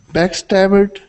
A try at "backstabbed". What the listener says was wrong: you would said backstabbed pronouncing that ID ending